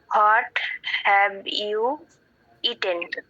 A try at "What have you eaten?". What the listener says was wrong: ও হোয়াট বলো না, what? What have you eaten?